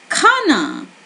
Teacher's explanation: So did you feel your breath escaping your mouth, touching your hand when you say kh? And when you say k, you would not feel it. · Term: aspirated sound